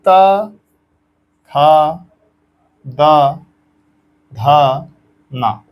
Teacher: त थ द धा न इसको आप बोल कर देखिए वायु हृदय से निकली तालु पे आई तालु पे नहीं रुकी मूर्धा पे आई उसके बाद ये जाकर सीधा दंत पे रुक रही है ता मतलब दांत से आपके प्राण वायु टकरा रही है तो इसलिए इसका उच्चारण स्थान दंत इसकी संख्या भी पांच है।